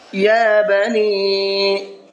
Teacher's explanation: یا کے اوپر کھڑا زبر ہے اور اس کو کھینچ کر کے پڑھنا ہے